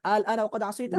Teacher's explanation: একটা নিয়ম আছে, যখন দুই হামজা একত্রিত হয়ে যায় দ্বিতীয় হামজাকে তাসহিল করে দেওয়া হয়, অর্থাৎ সেটাকে মাদ হিসেবে পড়া হয়, আ টান দিয়ে পড়া হয়।